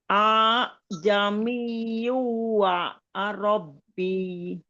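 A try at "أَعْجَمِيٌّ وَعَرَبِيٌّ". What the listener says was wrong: Ianya yang bertasydid Bun. Jadi wa arabiyyu, bukan wa arabbi. Tapi wa arabiyyu. A'jami. Ro-nya tidak panjang.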